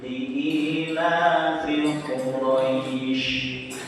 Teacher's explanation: Makanya disebut mat lin. Jadi ada huruf hidup yang dibaca mati, sebelumnya ada huruf lin, roi ini huruf lin namanya. Makanya panjangnya itu boleh 2, boleh 4, boleh 6. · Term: madlin